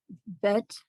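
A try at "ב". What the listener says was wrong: bet. V. It's no dot. Look at that.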